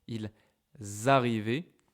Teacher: because we pronounce la liaison, okay, with the S, ils arrivaient, we know orally that il is at the plural form